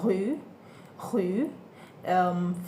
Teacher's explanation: We have r sound, which is rue, rue. French guttural r, produced at the back of the throat.